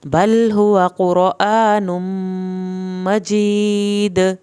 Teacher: دال کا آخر میں کلکلا کرنا ہے